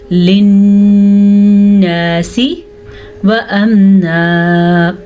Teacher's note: नून मुशद्दद और मीम मुशद्दद दो ऐसे अल्फाज हैं जब ये शद के साथ आ जाए तो गुन्ना करना मस्ट होता है